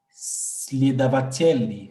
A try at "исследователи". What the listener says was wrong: исследователи, non, исследователи, ça commence par le I, исследователи,